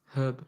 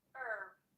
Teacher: So we pronounce the h like you're fogging up a mirror.